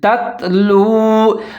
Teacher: ہے اس کے اوپر زبر لیکن آگے والا ساکن ہے تو دونوں تا کو ملا کے پڑھیں گے، تت اور باریکی سے پڑھیں گے